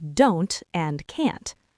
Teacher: We talked about using a glottle stop. You trap the air in your throat instead of popping the t out of your mouth.